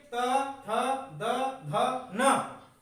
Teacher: आप जब बोलते हैं तो याद रखना है दंत से, आपकी जो जीभ है, टंग, वो कहां से टकरा रही है, दांतों से टकरा रही है।